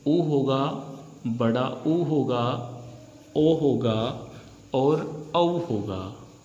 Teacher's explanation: वे स्वर जिनके उच्चारण में हमारे होठ गोल घूम जाएं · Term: व्रतमुखी